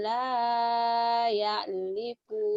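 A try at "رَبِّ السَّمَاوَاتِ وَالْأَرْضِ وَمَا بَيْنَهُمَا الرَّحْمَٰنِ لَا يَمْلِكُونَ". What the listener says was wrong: Yamliku. La yamliku bukan yaliku. Yamliku itu mim. Mimnya nggak kelihatan ya. Nah, ini yam. Ini mimnya nggak Layam ini ada mimnya ya. Layam liku ini ada ainnya ke sini. Ini kayak gini tulisannya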